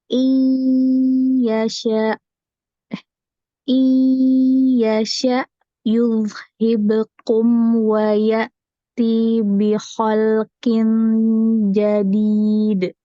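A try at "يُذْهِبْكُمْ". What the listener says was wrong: Wayati, tinya kepanjangan. Ini hati-hati, yuzhibukum. Kafnya agak maju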